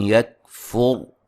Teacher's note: را کو موٹا ادا کریں گے، را ساکن سے پہلے پیش ہے